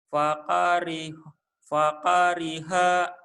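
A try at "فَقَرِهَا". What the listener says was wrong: Gak ada yang panjang. Fakariha. Fakariha.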